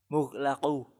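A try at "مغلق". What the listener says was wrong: Coba perbaiki qafnya. Mughlaqun.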